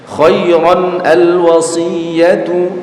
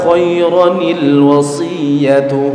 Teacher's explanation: suara dari nun sukun atau tanwin yang berbunyi an in un tadi ya dibaca menjadi huruf nun yang berharakat kasrah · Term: nun iwat